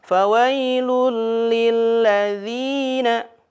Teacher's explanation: Lam dan ro, di sini huruf lam ya. Dhammah tain bertemu dengan huruf lam. Tidak boleh dengung, tidak boleh ditahan dulu, tapi harus langsung masuk ke huruf selanjutnya. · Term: idgham bila gunnah